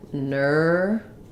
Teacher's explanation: almost going right from my V to my S sound. Maybe a little bit of an I in there, nervous, but I'm just trying to kind of transition quickly because the stress is here on the ner syllable.